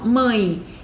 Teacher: a gente escreve mãe com E, mas quando a gente fala, esse sonzinho aí sai como se fosse um I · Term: semivogal